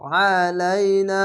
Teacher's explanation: আইনটিকে মোটা করে গলা চিপে পড়বেন